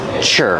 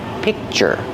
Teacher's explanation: I make the position of the K, the C, but I don't release the C- sound. I just make the position and I stop the air. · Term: stop sound